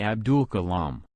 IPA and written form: ˈɑːbdəl kəˈlɑːm (Abdul Kalam)